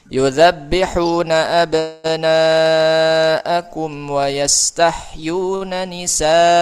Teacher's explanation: Huruf mad tabi'i yang bertemu dengan hamzah dalam satu kata. Ya, dalam bahasa Arab ya satu katanya. Cara baca dipanjangkan 4 atau 5 harokat. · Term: mad wajib muttasil